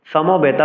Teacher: সংস্কৃত শ্লোক উচ্চারণে দন্ত স্বকে এস এর মতো উচ্চারণ করতে হবে, সমবেতা বলতে হবে, সমবেতা বলা যাবে না।